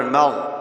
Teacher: غین کو پر پڑھنا ہے، میم کو پر نہیں پڑھنا. مغ ایسے نہ ہو، مغ.